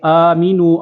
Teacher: آ کو بھی ایک الف کھینچیں گے